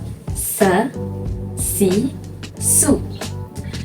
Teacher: menyebut huruf dengan bunyi desiran yang kuat